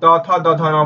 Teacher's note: जब आप त थ द ध न बोलोगे तो दांत और जीभ के बीच संपर्क होता है ना, तो बिना दांत के त थ द ध नहीं बोला जा सकता।